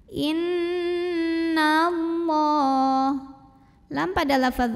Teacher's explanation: cara bacanya dengung bunyi n-nya tahan sampai ada getaran halus ke hidung kurang lebih 2 harokat